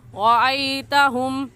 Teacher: موٹا کرنے کا طریقہ کہ آپ کے دونوں ہونٹ گول ہو جائے